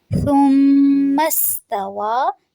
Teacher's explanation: سین میں سیٹی کی آواز رہنی چاہیے